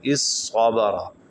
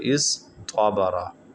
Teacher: طا کو صاد سے بدل کر صاد کو صاد میں پھر ادغام کرنا پڑے گا تو یہ ہو جائے گا اس صابرا، اگر ادغام نہیں کرنا تو یہ ہو جائے گا اس طابرا۔